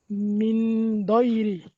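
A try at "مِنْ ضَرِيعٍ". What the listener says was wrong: মিন দয়রি হবে না, মিন দরি।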